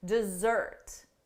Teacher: For the verb, the syllable stress is on the second syllable